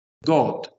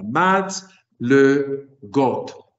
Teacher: Got, que es la sílaba acentuada.